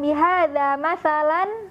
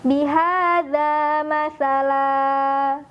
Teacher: sehingga bunyi an-nya dari harokat fathatain, masalan, diganti jadi panjang 2 harokat.